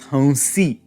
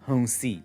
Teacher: Tvam becomes honsi. The N is now a nasal anuswara